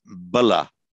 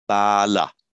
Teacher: The only difference between those two is the length of the first a and a. So it gives you an entirely different meaning.